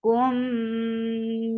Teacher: So you are keeping the sound in your nose for a longer time because idgham takes akmal gunna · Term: idgham shafawi